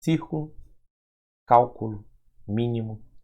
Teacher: elas tem como sílaba tônica é a antepenúltima sílaba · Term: proparoxítonas